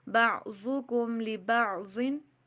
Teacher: غنہ نہیں کرنا، کم پہ بھی ضن پہ بھی